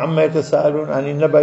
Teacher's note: mim shadda lazima itie gunna katika usomaji wake